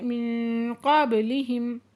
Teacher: نون ساکن کے بعد قاف ہے تو یہاں پہ اکفا ہو رہا ہے